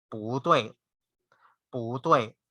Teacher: when two fourth tone syllables occur together, the first syllable will change into the second tone